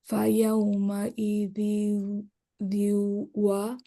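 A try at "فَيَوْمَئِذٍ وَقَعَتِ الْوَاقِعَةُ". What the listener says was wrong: নাকের টান কই, নাকের টান। ফায়াউমাইদিন ওয়াকাআতিল ওয়াকিয়াহ।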